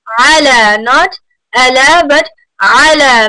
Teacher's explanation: ain is from the middle of your throat